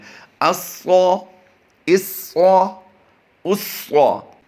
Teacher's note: صاد حروف مستعلیہ سے ہوتا ہے. اس کی ادائیگی ہم نے پر کرنی ہے